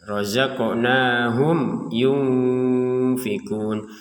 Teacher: di sini ada mim sukun bertemu dengan huruf ya. Maka kita membacanya dengan jelas ya.